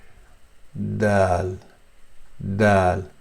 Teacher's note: dal is the tip of the tongue, and you touch it softly with the front teeth where they join with the gums and the upper part of this, the initial upper part of this hard palate, which says here, this part, this exact point.